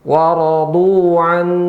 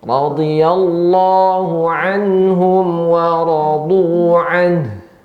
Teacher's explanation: Di sini nun sukun bertemu dengan ya ha, di mana hukumnya izhar. Tetap ada gunnah tapi tingkatan gunnahnya kurang, ya. Jangan waradu'an.